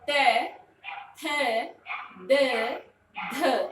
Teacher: यानी कि आपकी जो जीवा है वो किससे टच कर रही है? दांतों से, दांतों को छूकर जा रही है।